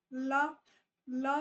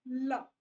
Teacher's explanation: आपका जो साउंड है वो टंग के साइड से बाहर निकलेगा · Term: लिक्विड